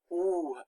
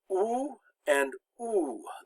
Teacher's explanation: Now here, OU makes the oo sound. That's one of the difficult sounds for English speakers to make, because you have to stick out your lips.